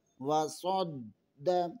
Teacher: صاد حروف مستعلیہ میں سے ہے، صاد کو دال کے ساتھ ملانا ہے، دال مشدد ہے، یہاں پر قلقلہ ہوگا۔